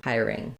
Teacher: we have first syllable stress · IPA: /aɪɚ/